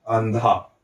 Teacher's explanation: न है ना। इसलिए इस अनुस्वार का उच्चारण किसके जैसे होगा? न के जैसा होगा